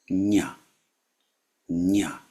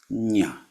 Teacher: So like where the same place where you would say ja but you make it a nasal sound. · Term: the equivalent nasal